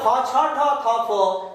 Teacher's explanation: বেশি শ্বাসবায়ু লাগছে কিনা, কয়ের থেকে বেশি লাগছে কিনা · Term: মহাপ্রাণ